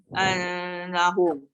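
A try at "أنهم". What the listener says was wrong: Tak boleh tu, dia renggang tu. Anna. Macam kita sebut ANNA. Anna. Saya bukannya betulkan yang nun sabdu. Saya betulkan ain tu kepada hamzah, ubah kepada hamzah bukan ain. Tak. Dia menjadi ain. Tu tadi terus masuk nun.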